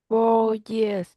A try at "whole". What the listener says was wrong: not whole. We don't really pronounce the W, it's just whole.